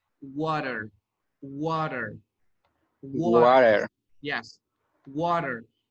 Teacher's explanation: Porque, digamos, a esta T le presenta una consonante, perdón, una vocal. Cuando a la T le precede una vocal, usted la pronuncia como R.